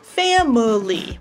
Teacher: You can leave in the schwa for three syllables, family. Or you can take it out and put the M and the L together to make a consonant cluster with two syllables, ml, ml, family. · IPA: / ˈfæm ə li /